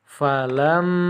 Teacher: Cara membacanya yaitu dengan mendengung sebanyak 2 ketukan atau 2 harokat. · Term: ghunnah musyaddadah